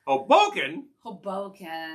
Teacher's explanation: put the accent on the second syllable